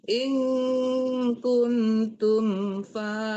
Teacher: kunnya dengung tapi tumnya tidak ya tumnya itu izhar syafawi ya tidak berdengung mim ketemu fa ya mim itu kalau Kalau mim mati yang berdengung bertemu mim dan bertemu ba.